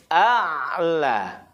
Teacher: Kalau hamzah, tempat keluar hurufnya di tenggorokan paling bawah. Kalau ain, di tenggorokan yang tengah.